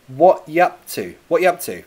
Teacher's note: Can you hear that? The you and up, they get contracted to yup